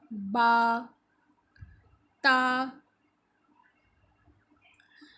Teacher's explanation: بند ہونٹوں کے گیلے حصے سے ادا ہوگا · زبان کی نوک جب اوپر کے دانت کی جڑ سے لگتی ہے تو تا ادا ہوتا ہے